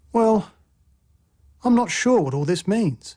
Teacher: a fall rising tone expresses uncertainty